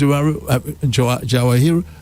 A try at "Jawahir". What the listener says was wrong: You can lighten it. Shower hair. You can lighten it, shower hair. You don't have to pronounce the R at the end. You can just say shower hair.